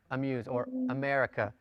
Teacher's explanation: it's a short vowel it's pronounced very quickly like the a in the English word amuse it's simply the uh sound · it's quick almost indistinct in terms of its vowel class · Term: hotep pathic